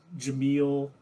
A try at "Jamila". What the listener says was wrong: Jamila. Her first name is the same as her last name, except for there's an A. So Jamila.